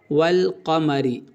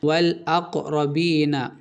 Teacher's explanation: صرف لام کو پڑھیں گے، الف کو سائلنٹ کر دیں گے آپ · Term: حروف قمری